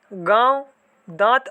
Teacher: अब देखते हैं हम लोग यहाँ पे अनुनासिक में क्या होता है, जिस ध्वनि के उच्चारण में हवा नाक और मुख दोनों से निकलती है उसे अनुनासिक कहते हैं